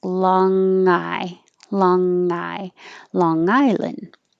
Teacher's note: your tongue goes very high in the back and the air goes through your nose but you don't release it with the burst of air